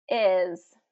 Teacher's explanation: with our Spanish speakers, this is typically pronounced as ease, instead of is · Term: short I